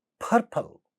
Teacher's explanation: Here you have pa at the initial position of the stressed syllable, hence aspirated.